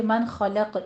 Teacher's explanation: من خلق اظہار حلقی ہے کیونکہ حروف حلقی میں سے خو آ رہا ہے ، من خلق، قوف پہ قلقلہ کریں گے وقف کی صورت